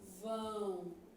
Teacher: O M tem som de semivogal. No caso, a semivogal U.